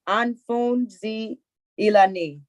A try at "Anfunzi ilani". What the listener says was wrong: That's correct.